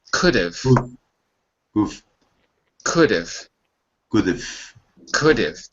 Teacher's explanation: We say of. It's the weak form where you don't hear the vowel. Basically, you don't hear it, or at least it's very, very muted.